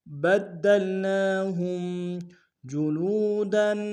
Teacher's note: نون کے اوپر کھڑا زبر ہے، ایک مقدار میں کھینچیں گے